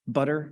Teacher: you don't pronounce the tea we call that a flap